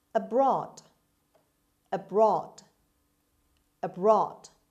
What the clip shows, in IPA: əˈbrɒːd